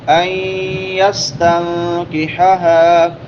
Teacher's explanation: نون ساکن کے بعد یا آ گئی ہے حروف یرملون میں سے، تو ادغام مع الغنہ ہوگا.